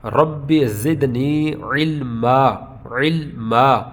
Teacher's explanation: علمن نہیں پڑھیں گے بلکہ علما الف سے بدل دیں گے. ایک زبر اس کا جو ہے وہ ختم ہو جائے گی اور دوسری ایک رہ جائے گی، علما.